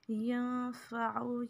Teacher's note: یہاں پہ اخفا کریں گے نون پہ اور عین کو کھینچنا نہیں ہے